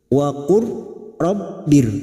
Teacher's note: Waqur rabbir, memasukkan dua huruf yang berdekatan makhrajnya. Memasukkan huruf mati yaitu huruf lam sukun kepada huruf berikutnya yaitu huruf ra, disebut dengan idgham mutaqaribain.